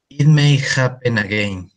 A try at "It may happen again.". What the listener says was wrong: Yes, that is very good.